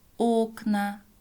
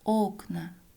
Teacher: «о» в начале слова ударное, поэтому произносим как «о»